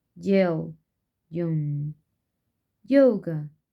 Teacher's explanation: Spelling system of ya, palatal, approximant, and voiced.